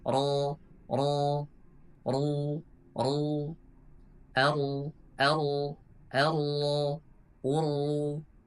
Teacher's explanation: Nah, kemudian ketika dia fathah, ketika dhammah dan juga berharokat tasydid, dia harus ditebalkan. Jadi pangkal lidahnya juga harus dinaikkan. · di ujung lidah bertemu dengan langit-langit bagian depan. Nah, kemudian ketika dia fathah, ketika dhammah dan juga berharokat tasydid, dia harus ditebalkan. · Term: huruf ro